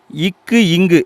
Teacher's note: நாக்குடைய முதல் பகுதி அண்ணத்துடைய அடிப்பகுதியை தொடுவதால பிறக்குது